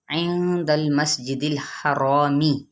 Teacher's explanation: عند المسجد الحرامی، ٹھیک ہے، نون پہ اخفاء حقیقی، لام کو ہلانا نہیں، سین کی سیٹی کو واضح کرنا ہے۔